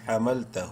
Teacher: الٹا پیش کی وجہ سے ہا کو ایک الف کے برابر لمبا کریں گے